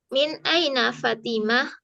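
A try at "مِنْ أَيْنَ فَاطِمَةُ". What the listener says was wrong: Fa panjang Fatimah tuh.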